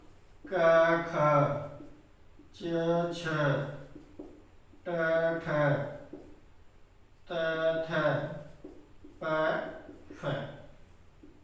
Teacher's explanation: इन व्यंजनों का उच्चारण करेंगे तो हमारे स्वर तंत्री में कंपन नहीं होता है, तो उन्हें कहते हैं अघोष व्यंजन